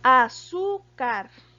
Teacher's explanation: Tiene el acento en la sílaba su, que en este caso está en la penúltima posición o en la segunda de derecha a izquierda.